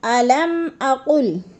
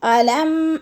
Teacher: علم غنہ نہیں کرنا، ادھر اظہار حلقی ہے ، جیسے میم ساکن کے بعد قوف حمزہ آ گیا ہے